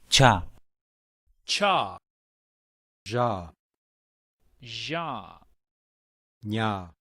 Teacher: The palatals are made with the back of the tongue touching the palate or the roof of the mouth.